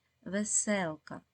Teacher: у цьому слові є три склади другий наголошений